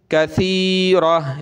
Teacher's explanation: कसीरतन, वक़फ़न, वक़फ़ में ये गोलता हा बन जाती है, कसीरह, रुकेंगे तो इसको हा बना देंगे